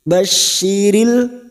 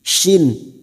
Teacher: Basyiril huruf shin tafasi. Jangan samakan dengan sin.